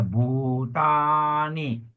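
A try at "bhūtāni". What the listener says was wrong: Don't forget your long U also.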